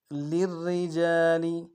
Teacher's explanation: را کے نیچے زیر ہے باریک ادا کریں گے، اور اگلے را تشدید زور دیں گے، اگلے را کے نیچے زیر ہے باریک ادا کریں گے دونوں را کو.